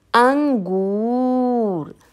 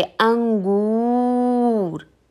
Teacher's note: यहाँ पर अनुस्वार के लिए हम अनुस्वार में हमारे बिंदी लगी होती है, यह बिंदु अनुस्वार कहलाता है। गले से आने वाली वायु नाक के मार्ग से बाहर निकलती है।